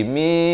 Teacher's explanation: Kalau kita jelaskan mim baris kasrah bertemu nun bunyi min. Tapi bila disamarkan di antara nun dan dal jadi mi, nak kata nun pun tidak, dal pun tidak, dengan kadar panjang 2 harakat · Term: ikhfa hakiki